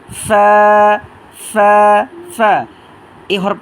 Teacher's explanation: এটা উচ্চারিত হবে আপনার নিচের ঠোঁটের পেট পেট আছে না ওই নিচের ঠোঁটের পেটের সাথে আপনার সামনে দুই দাঁতের আগাটা লাগিয়ে দিবেন